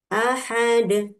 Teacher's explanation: karena kita ee wakaf ya, berhenti maka harus memantul